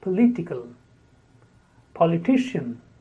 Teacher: the letter O is spoken as a because the stress is on the second syllable